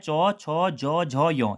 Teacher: चौ छौ जौ झौ यों, कभी कभी प्रश्न पूछ लेगा इनमें से कौन सा स्पर्श संघर्षी व्यंजन है, तो याद रखना है चौ छौ जौ झौ यों, जो हमारा तालव्य वर्ग होता है उसी को स्पर्श संघर्षी व्यंजन भी कहते हैं